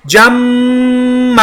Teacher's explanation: میں نے اخفا کیا کیونکہ آگے جیم اخفا کا ہے، جمع، میم شدہ کے اوپر شد ہونے کی وجہ سے لازمن غنہ کیا